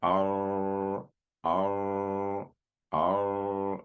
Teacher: And this is because when you're saying the letter ra, the tip of the tongue is coming up and it's touching your top palate. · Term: takrir